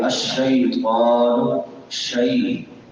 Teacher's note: شی، یہ یا لین ہے، یا ما قبل فتحہ ہے